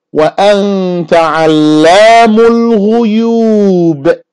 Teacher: that B at the end, you hear the little sound I'm making, that's another قَلْقَلَة